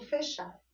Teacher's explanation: Note que esse E, essa vogal E, ela está com um som fechado